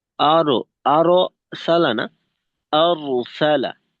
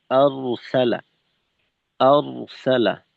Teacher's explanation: রয়ের ওয়া আওয়াজটা দ্বিতীয়বারে হবে না, যা হওয়ার একবারেই হয়ে যাবে।